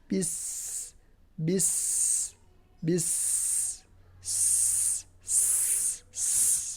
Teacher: Jadi ada suara yang harus tajam seperti suara bersiul. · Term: sofir